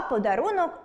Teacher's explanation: У слові “подарунок” звук [о] ненаголошений, але наступний склад зі звуком [а] ніяк на нього не впливає, а отже, [о] чуємо чітко.